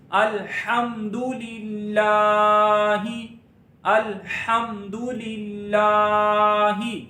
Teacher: لفظ اللہ کے لام کو باریک پڑھیں گے، لام پر ذرا رک کے پڑھیں گے، لام پر کھڑی زبر ہے الف جتنا لمبا کریں گے.